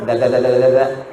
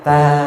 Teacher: Da dengan ta tempatnya Sama